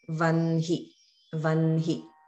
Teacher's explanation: an example for the na sound, the dental na, would be the word vanhi. So some people might say vahni, but because of the rule, we say vanhi.